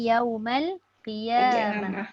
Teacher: dibaca dengan ha apabila waqaf. Kalau tak waqaf tidak dibaca dengan ha. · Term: Ta marbutah